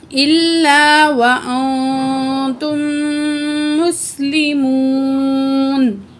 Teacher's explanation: نون ساکن کے بعد تا حروف اخفا میں سے آ رہی ہے، نون کی آواز کو ناک میں چھپا کے پڑھیں گے · وقف کریں گے، آخری الفاظ پہ زبر ہے، زبر ڈراپ ہو جائے گی، ختم ہو جائے گی، ساکن پڑھیں گے نون کو